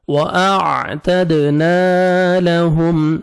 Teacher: میم ساکن کا اظہار ہے، جلدی پڑھیں گے